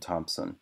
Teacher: you're going from M to s and so the thing is you're going from a voiced consonant to a voiceless consonant and you're also moving from a nasal bilabial nasal - of